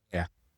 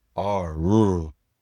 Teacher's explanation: R en anglais. En français, le R se fond en forme de la gorge. R. Mais en anglais, le R c'est fait avec une vibration.